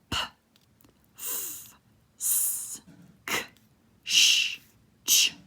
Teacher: Notice that these are all voiceless, only air coming out.